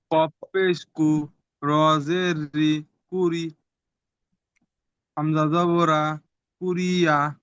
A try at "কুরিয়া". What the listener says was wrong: ওকে, এই জায়গায় একটু ভুল হয়েছে। দ্বিতীয় শব্দটা আপনাদের অনেকের ভুল হচ্ছে এখানে। দেখেন এখানে যে দ্বিতীয় শব্দ রয়েছে, হ্যাঁ, কফ পেশ কু র জের রি উরি হামজা জবর আ, শক্ত আওয়াজে পড়তে হবে।